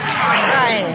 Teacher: raspy, like you really need to constrict your head